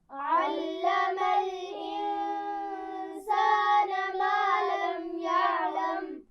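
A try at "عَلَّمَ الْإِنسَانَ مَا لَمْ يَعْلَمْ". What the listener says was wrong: عین کو بہت سختی سے نہیں پڑھیں گے، ٹھیک ہے. یعلم بہت زور نہیں دینا.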